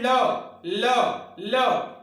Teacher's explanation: हवा जो निकलती है वो बगल से होकर निकल जाती है, वो हटकर निकल जाती है। जैसे ल, जिह्वा क्या होती है, उसकी जिह्वा की अग्रनोक बीच में स्पर्श करती है और जो हवा है वो दोनों तरफ से बाहर निकल जाती है, जैसे हम बोलते हैं ल ल ल। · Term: पार्श्विक व्यंजन